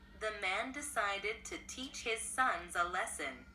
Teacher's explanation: Ở đây chúng ta sẽ lên giọng một chút xíu ngay chỗ cái chữ teach nha. Và lessons thì chúng ta hơi xuống chút xíu.